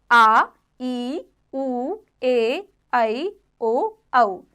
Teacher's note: दीर्घ स्वर, जिन स्वरों के उच्चारण में ह्रस्व स्वर से दोगुना समय लगता है वे दीर्घ स्वर कहलाते हैं